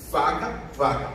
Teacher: O dente de vocês bate em cima dos lábios, não é isso? Tanto para V como para F.